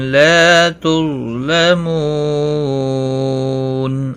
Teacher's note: وقف کی صورت میں وقف بالاسکان ہوگا. مد العارض وقفی ہوگا، 3 سے 5 الف کے برابر کھینچ کر اور وقف کریں گے